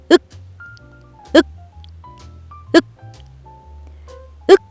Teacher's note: 윽 하고 말하고 나면 혀가 당겨져서 목구멍을 막고 있어요. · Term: 받침 소리